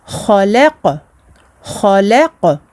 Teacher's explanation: Et le qaf avec lequel on termine le verset, sakin, donc nous faisons disparaître la fatha. Et puis à ce moment-là, nous faisons une qalqala.